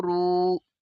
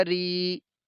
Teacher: اوپر پیش ہے تو را کی آواز کو موٹا کریں گے، اور را کے نیچے زیر ہے تو را کی آواز کو باریک پڑھیں گے